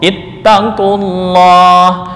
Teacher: Karena lam didahului oleh dhamah. Maka lam pada lafal Allah dibaca dengan tafhim atau tebal sesuai dengan kaidah ilmu tajwid.